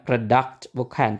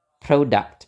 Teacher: Jadi yang O-nya itu diberi tekanan. Jadi kita nggak pakai schwa lagi.